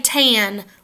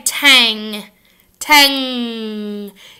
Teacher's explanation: you notice your tongue comes to the front of your mouth now let's say Tang Tang your tongue goes up in the back